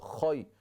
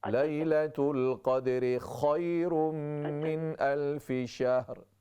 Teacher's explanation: یہ خا جو ہے نقطے والی، اس میں اس طرح خراہٹ کی آواز ہو